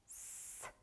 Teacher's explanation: Произнесем звук «с» и послушаем, что происходит. Горло не вибрирует, значит звук «с» глухой.